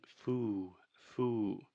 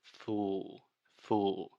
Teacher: So the correct pronunciation is fool, fool. This is a very difficult sound, this final L sound. In linguistics, many times we call this the dark L.